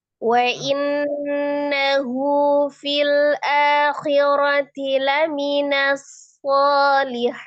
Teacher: Hu-nya 2 harokat ya, tidak lebih.